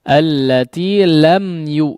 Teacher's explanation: mim sukun yang diizharkan bacanya lam yukhlaq